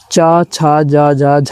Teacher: च, छ, ज, ज, झ जो है स्पर्श संघर्षी व्यंजन हैं